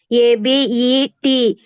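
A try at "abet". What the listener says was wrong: ఈయన అంత long చేస్తేవి, English లో అంత లాంగ్ చేయకూడదు. ఏబిఈటి అబెట్, ఏబిఈటి అబెట్ అంతే.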